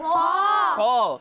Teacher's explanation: خا کو حلق کے خا کو اوپر والے حصے سے ادا کیا جاتا ہے